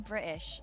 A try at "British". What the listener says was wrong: British. British. We don't pronounce the T's.